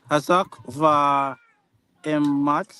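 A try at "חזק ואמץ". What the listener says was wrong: That's not va, but ve. Ve emat. Chazak ve emat.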